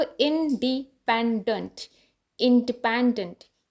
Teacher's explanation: ई जो फर्स्ट बिल्कुल स्टार्टिंग में बॉटम पे लग रहा है वो है सेकेंडरी स्ट्रेस